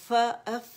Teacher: جو اس کا ہمس ہے نا اسے فیل کریں, ہوا آپ لوگوں کے ہاتھ پر آئے گی